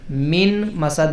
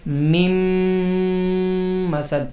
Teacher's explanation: من مسد ہے، نون ساکن کے بعد میم کا لفظ آ جائے تو نون ساکن کو میم کے اندر ملا دیتے ہیں، شامل کر دیتے ہیں، گویا کہ نون کی آواز ختم ہو جاتی ہے. تو یہ میم نون میم زیر میم بن جائے گا.